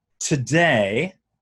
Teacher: So the T's and D's will have overaspiration.